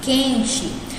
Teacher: A gente não pronuncia o U, a gente fala quente. É como se esse U nem existisse, né? Como se fosse só o Q e o E.